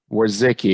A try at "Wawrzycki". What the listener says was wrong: Take out the second W.